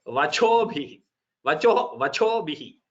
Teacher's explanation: You should not by mistake say vachobhihi, vachobhihi, where the chakara gets mahaprana and bhakara gets alpa prana